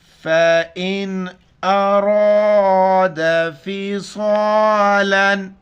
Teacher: فَإِنْ أَرَادَ فِصَالًا، حمزہ کو نون کے ساتھ ملائیں گے، را کے اوپر زبر ہے، را کو موٹا کر کے پڑھیں گے، صاد موٹے الفاظ میں سے صاد کو موٹا کر کے پڑھیں گے۔ فا زبر ف، حمزہ نون زیر ان، فَإِن، یہ اس کو میں حمزہ پڑھ رہا ہوں، الف کے اوپر زبر زیر پیش ہو تو وہ پھر حمزہ پڑھا جاتا ہے۔